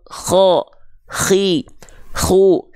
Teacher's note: Kalau huruf kho dia punya sifat nafas juga, tapi karakternya seperti mendengkur.